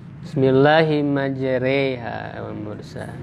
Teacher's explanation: yang mirip bunyi bunyi E itu imalah